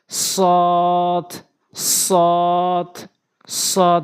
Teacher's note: জিহ্বার আগা উপরে নিচে দুই দাঁতের আগার সঙ্গে লাগাবেন, তাহলে সৎ সঠিকভাবে উচ্চারণ হবে।